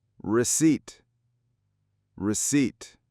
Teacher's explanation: Receipt has two syllables. We stress the second one. The P is silent. Ignore the P.